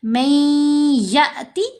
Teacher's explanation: کیونکہ نون ساکن کے بعد یا ہے، یرملون کا ادغام ہوگا، نون کی آواز یا کے اندر ہی مکس ہو جائے گی، میم کو یا سے ملائیں گے غنہ کرتے ہوئے، پھر یا کو حمزہ ساکن سے جب ملانا ہے تو جھٹکا دینا ہے